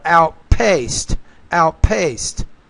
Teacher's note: So you're putting the stress on the right syllable, but you just have to pronounce the P with more air.